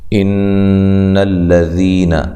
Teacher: نون مشدد پہ غنہ ضروری ہے، لام کو موٹا نہیں پڑھنا ہے اور لمبا بھی نہیں کرنا۔